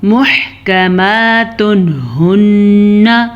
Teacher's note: اب یہاں پہ ہمارے پاس پھر سے تنوین کے بعد حروف حلقی میں سے ہا ہے تو ہم تنوین کو ظاہر کر کے پڑھیں گے بغیر غنہ کے پڑھیں گے